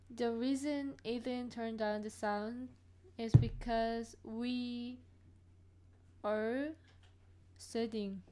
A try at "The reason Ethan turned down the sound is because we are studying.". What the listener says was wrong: Excellent. You sound perfect.